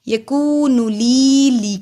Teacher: یکون لی کو لمبا کیا، جزم والی یا سے پہلے زیر، حروف مد ایک الف کے برابر لمبا ہوگا